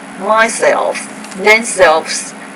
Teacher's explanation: When you put self on the end of a word, myself, themselves, ourselves, we stress the self part of the word.